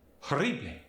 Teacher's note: A more aggressive rolled R comes when there's a double R.